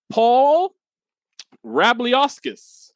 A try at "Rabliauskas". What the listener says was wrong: Oh, that's close. It's the we don't pronounce the I in that, so it's Rabliauskas.